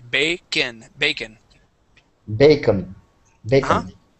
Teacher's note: the end is actually pronounced like a short I